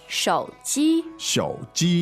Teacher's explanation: Tones are third and first.